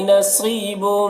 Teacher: نصیب صاد کو پر پڑھنا ہے اور یہاں پر یا مدہ ہے، اسے بھی ایک الف کے برابر کھینچیں گے